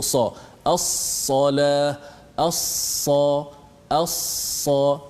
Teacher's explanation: Lidah kita terangkat sehingga suara itu terperangkap di antara ruang lidah itu ke langit.